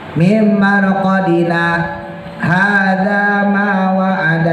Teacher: berhenti tanpa napas jadi berhenti tapi enggak ngambil napas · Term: saktah